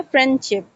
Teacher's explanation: A sound is omitted often in rapid or casual speech. Example, friendship often loses the D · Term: deletion